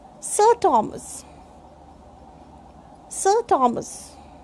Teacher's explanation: So before consonant sound, R is silent.